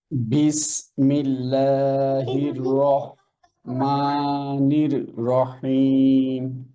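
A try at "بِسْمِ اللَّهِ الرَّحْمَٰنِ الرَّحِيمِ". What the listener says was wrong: আচ্ছা, এখানেও সেম thing, রটা ধরবেন আর হাটা একটু পাতলা, রহমান, হ্যাঁ?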